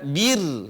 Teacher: Sukun dan sebelumnya adalah kasrah dibaca bir dibaca tipis bir ya Ini dibaca tipis bir karena sebelumnya adalah kasrah